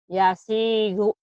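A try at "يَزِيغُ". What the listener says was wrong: Yazigu. Yazigu itu G. Gu. Yazigu. Gu. Yazigu. Bukan yasi. Ini zai. Yazigu. Za. Yazi. Z. Z. Yazigu.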